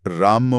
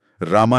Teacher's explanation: शब्द के अंत में इस अंतर्निहित अ को एक पॉज की तरह ट्रीट करना है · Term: श्व डिलीशन